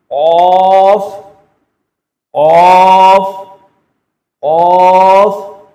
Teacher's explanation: قاف کو بھی موٹا کر کے پڑھنا ہے، زبان کی جڑ کو اوپر تالو کے ساتھ لگا کے جب پڑھیں گے تو اس کی ادائیگی درست ہوگی، قاف قاف قاف۔